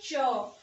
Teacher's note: ठीक है, जैसे हम बोलते हैं च, तो च बोलते हुए जो जीभ है हमारी वो ऊपर तालु पे क्या हो रही है, टच हो रही है। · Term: तालव्य व्यंजन